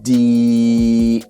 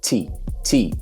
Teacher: So what it was is the voiceless consonant and the voiced consonant are something like a T to the D. In the D, you have a little bit of a deeper voiced sound, like a D, and then in the T, it doesn't have that.